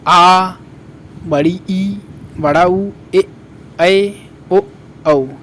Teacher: दीर्घ स्वर जिसमें 2 गुना समय लगता है, आ, बड़ी ई, बड़ा ऊ, ए ओ औ, इसमें 2 गुना समय लग रहा है।